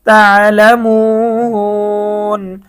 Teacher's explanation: পেশের পরে ওয়াও সাকিন, এটা মদ্রা হরফ। মদ্রা হরফের পরে আমরা ওয়াকফ করেছি, যার কারণে 3 আলিফ টান।